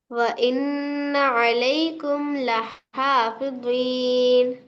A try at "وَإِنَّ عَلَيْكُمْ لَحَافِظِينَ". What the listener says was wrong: بہت اچھے، ماشاء اللہ.